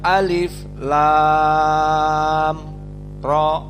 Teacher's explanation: Maknanya di sini tidak ada idgham antara lam dengan ra, tidak ada idgham. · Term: mad lazim harfi al-mukhaffaf